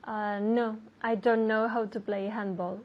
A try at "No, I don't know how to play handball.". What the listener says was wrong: Okay, now you're not saying the T again.